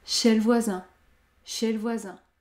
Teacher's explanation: Je supprime le E du mot « le » car il y a une seule consonne prononcée devant. L. Le mot « chez » se termine par une voyelle prononcée.